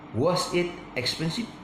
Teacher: If you see my voice going up, you are correct. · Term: intonation